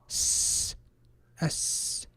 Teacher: I am expelling air from my lungs, constricting that air with my tongue and my teeth, and that gives me the letter S, sin.